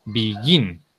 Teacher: El acento, el stress, va al final, va en la segunda sílaba, va en la sílaba gin